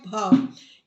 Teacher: हिंदी की स्पर्श घोष महाप्राण ओष्ठ व्यंजन ध्वनि है भ